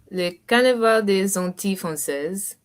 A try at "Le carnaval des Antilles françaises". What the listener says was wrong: Très bien, very good.